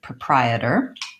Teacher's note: we don't have an O sound in proprietor we actually start with the UH sound that's because the stress in this word is on the second